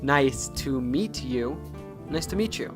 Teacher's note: end in a t sound followed by words that start with a y sound sometimes merge into a ch sound